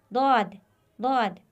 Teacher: जबान का किनारा दाया या बाया किनारा जब ऊपर वाली दाढ के मसूड़ों से लगे तो यह हर्फ अदा होगा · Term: हरफे दद